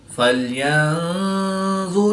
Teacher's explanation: نون ساکن کے بعد ظاء حروف اخفا میں سے ہے تو یہاں پر اخفا ہوا یعنی غنہ زمانی کر کے پڑھیں گے۔ · یہاں پر نون ساکن کے بعد سین حروف اخفا میں سے ہے تو یہاں پر بھی اخفا ہوا یعنی غنہ زمانی کر کے پڑھیں گے۔ میم مشدد ہے تو یہاں پر غنہ آنی کر کے پڑھیں گے